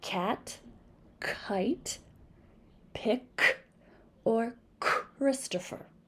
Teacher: differences between the two these can be known as tongue scrapers both of these sounds are made in the back of the throat the tongue scrapes the roof of the mouth is unvoiced and